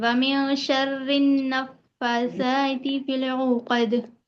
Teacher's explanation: پھر ایک بار فا کو جی پڑھیں گے شر النفاثات اور را کو یہاں پر باریک پڑھیں گے کیونکہ را کے نیچے زیر ہے